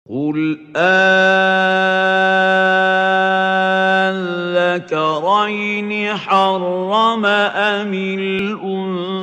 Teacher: So it is this emphasis, this shadda, following al-ta'rif that makes us call this type of differentiation mad a heavy differentiation mad. We lengthen the alif, a compulsory elongation mad for 6 units.